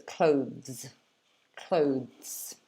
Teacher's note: And then the S at the end is like a Z, so it's clothes.